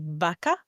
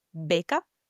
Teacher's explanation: The only big difference is that the V you'll pronounce with the teeth on your lower lip, and the B you'll say by closing both lips